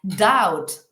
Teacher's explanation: aquí la B por ejemplo no suena